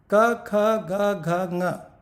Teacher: Soft palate में tongue and अपनी जिह्वा पीछे जाके लगती है, वहां से उसका उच्चार हो रहा है, इसे कंठ कहेंगे, कंठ से उच्चार है।